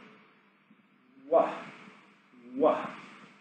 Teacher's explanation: we start with our lips in an O shape, and we begin voicing it as we separate our lips apart. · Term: W sound